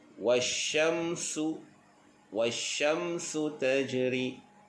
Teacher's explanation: Dan sin pula bacaannya sofir, berdesir.